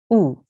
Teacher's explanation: an alif which carries a dhamma is pronounced softly and just for 1 second or 1 count, and we pronounce it oo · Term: madmoom alif